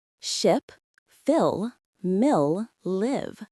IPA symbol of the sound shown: ɪ